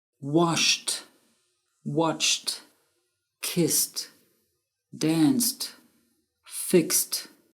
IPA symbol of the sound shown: t